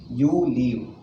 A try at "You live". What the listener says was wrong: Live and leave, there is a difference. Leave means it is leaving out. Live means it is living. Don't say leave. I should not be long. You live.